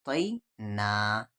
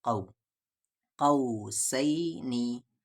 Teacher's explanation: تو حروف لین دو ہیں، یا اور واو، یا ساکن سے پہلے زبر ہو یا لین، واو ساکن سے پہلے زبر ہو واو لین، اور یا لین کی آواز ای ساؤنڈ پہ ہوگی، واو لین کی آواز او ساؤنڈ پہ ہوگی